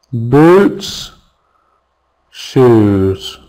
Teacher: The same vowel sound, isn't it? Ooh, long vowel sound. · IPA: u: